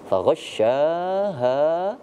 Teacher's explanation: tahan dulu di huruf shin karena ada tasydid, dibaca pula panjang karena ada tanda baca alif tambahan dari mat tabi'i